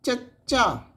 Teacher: ਦੇ ਵਿੱਚ ਤਾਲਵੀ ਧੁਨੀਆਂ ਨੇ ਜਿਹੜੀਆਂ ਪਲੇਟਲ ਜਿਨਾਂ ਦੇ ਉਚਾਰਨ ਸਮੇਂ ਸਾਹ ਦੀ ਹਵਾ ਨੂੰ ਦੰਦ ਪਠਾਰ ਤੋਂ ਸਖਤ ਤਾਲੂ ਦੇ ਵਿਚਕਾਰ ਜੀਭ ਦੀ ਨੋਕ ਰਾਹੀਂ ਰੋਕਿਆ ਜਾਂਦਾ ਹੈ